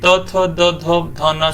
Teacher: ये सब आपके जीभ जो है वो हमेशा दांत पे टच करेगी